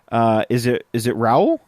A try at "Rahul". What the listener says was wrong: Rahul. They actually pronounced the H in it. I think Americanized it would have been Raul.